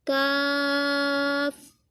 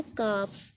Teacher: इसको हमने पुर पढ़ना है क़ाफ़, और इसको हमने बारीक पढ़ना है काफ